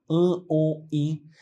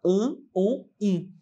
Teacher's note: a repetição das vogais nasais que é esse som que eu faço como se Ele saísse mais pelo nariz